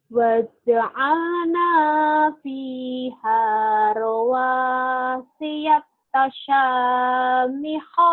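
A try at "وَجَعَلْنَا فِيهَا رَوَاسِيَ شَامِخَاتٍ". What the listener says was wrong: Bukan tasa, syamihot terbalik. Waja'alna fiha rawasiya syamihotiu wa asqainakum ma'am.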